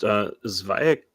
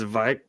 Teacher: It's like almost a vowel between the Z and the V sound.